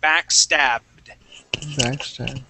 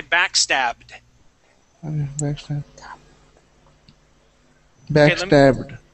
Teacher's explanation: we want to jump from that b sound right to the D sound and say backstabbed